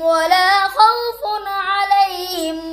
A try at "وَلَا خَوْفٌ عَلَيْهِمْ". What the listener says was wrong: پھر خوفون کلکلا کر دیا.